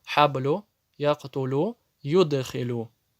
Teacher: Это самая маленькая коль-каля. Немножко отдает звук эхом.